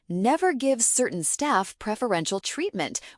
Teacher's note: Certain staff was linked together and preferential was said softly. If you are not used to this connected speech, it is hard to catch the answer.